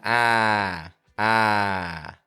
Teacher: you start out with your jaw open. Your tongue is high in the back, low in the front. That gives us the sound ah, ah.